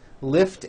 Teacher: Lift ends with an unvoiced T.